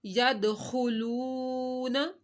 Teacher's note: ورأیت الناس یدخلون، یہاں پہ ہم نے دال ساکن تھا، دال کے اوپر کلکلا کیا، دال حروف کلکلا میں سے تھا، خا کو موٹا پڑا۔ یدخلون، وو ساکن سے پہلے پیش ہے تو وو مدہ کرنا ہے